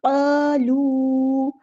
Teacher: क़ाफ़ हमारा पूरा अदा होगा, हैवी लेटर है और यहाँ पर अलिफ मद्दा आ गया तो एक अलिफ के